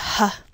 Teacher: made by making sure the glottis is open enough that the vocal cords don't vibrate, but close enough to cause some friction in the air, which is why you can hear it at all. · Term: H sound